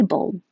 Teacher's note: because i'm not releasing the d if it's by itself disabled the l and the d are in the same place so you just hold your tongue in the d position and don't release the air to say bold but you'll hear the d if it connects